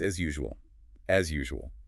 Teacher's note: when a buzzing Z sound meets a Y sound, it creates a soft, vibrating Z sound.